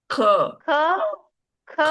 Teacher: इसको आप गले जो है ना जुबान से निकाल दें जुबान की जड़ से